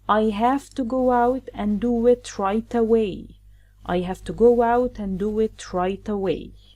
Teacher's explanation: So here we have go out, and we add the wah sound, and do it, another wah sound.